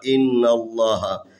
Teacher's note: یہاں لفظ اللہ سے پہلے نون ہے، نون کے اوپر زبر ہے، لفظ اللہ کو تفخیم پڑھیں گے